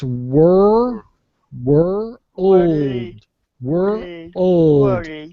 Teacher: that were old world world yeah you're saying world were were I'm bringing the voice to the front of my mouth and I'm rounding my lips